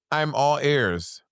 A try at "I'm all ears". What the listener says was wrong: Ears, not airs. What do you breathe in? What on the side of your head? Now say air. Like when there's air in your ear. No, say I have ear air. No, I can hear my ear air. I can hear the air.